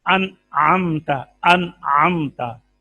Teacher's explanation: یہ غنہ منہ سے نہیں نکلتا، یہ غنہ ناک سے نکلتا ہے۔ · انعمتا میں نون میں بھی ناک آواز میں گئی ہے، میم میں بھی گئی ہے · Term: غنہ آنی